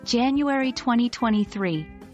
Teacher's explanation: if only the month and year are given we stress the year